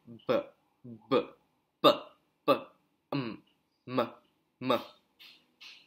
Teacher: That's bilabial. Produced by using the two lips.